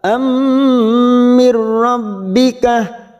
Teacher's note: Fathah tanwin bertemu mim idgham bi gunnah, siap masuk ke huruf mim, kita tekan 3 ketuk.